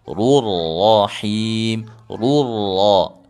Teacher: huruf ra berbaris doma, berbaris fathah itu ditebalkan dua-duanya. Him boleh dibaca 2, 4 atau 6 harokat, begitu.